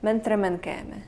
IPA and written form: mənt.ɾəm.ənˈkeː.mə (mnt-rmn-kēme)